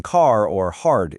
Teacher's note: American English is rhoticity, so the R in car or hard is pronounced.